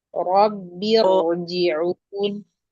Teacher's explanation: Ra sedikit ditambah durasinya, tebalkan lagi.